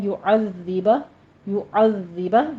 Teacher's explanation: او میں پھر واو لین ہے، یعذبہ، یعذبہ ذال کی تشدید ادا کیجیے اور نیچے کسرہ ہے، ذال میں سیٹی کی آواز نہیں آنی چاہیے، نرمی سے پڑھنا ہے